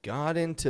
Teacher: Notice that those words, got and into, they're together. They sound like all one word